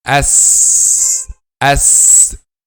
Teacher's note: the sound passes between upper and lower front incisors